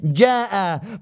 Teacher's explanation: الجيم تخرج من وسط اللسان ويكون في انحباس للصوت والمخرج يكون مقفول